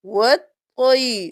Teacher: پر ہم اس الف اور اس لام کو نہیں پڑھیں گے، ہم واو کو طا کے ساتھ ملائیں گے اور طا موٹا پڑھیں گے ، واو زبر طا وط، طا زبر یا طی، وط طی،